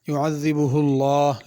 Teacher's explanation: لفظ اللہ کے لام کو پر پڑھنا ہے